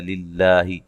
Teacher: لفظ اللہ کو باریک پڑھیں گے، اس سے پہلے زیر ہے